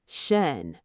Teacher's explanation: Sh, then N. Shun, not shern. The lips stay round.